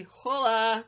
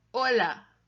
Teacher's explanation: The H in Spanish is silent. We don't hear it. It's a classic Anglophone mistake to say hola, but it should be hola.